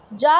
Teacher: जा जो है एक तालव्य ध्वनि मानी जाती है